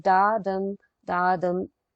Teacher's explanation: it comes in the form of unstressed followed by stressed syllable